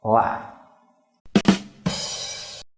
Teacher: the word la, meaning strange, you just block it off with the throat with a glottal stop